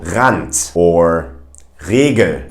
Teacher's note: in English, we tend to pronounce the R from the front of our mouth. But in German, it comes from the back